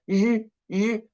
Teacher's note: we can feel the vocal cords vibrating. 日, 日, you can touch your throat.